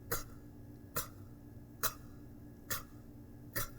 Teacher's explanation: From the back of the throat that sound comes.